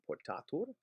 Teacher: the A in portatur does not shorten because it's no longer final. In portat, in the active, it was before the final it's before the final T and it's shortened.